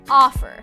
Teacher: How about the verb offer? Offer. Again, the first syllable is stressed.